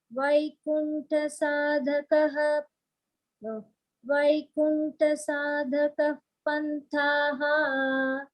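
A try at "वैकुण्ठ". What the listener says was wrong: And not Vaikunta. Vaikuntha. Tha is a Mahaprana.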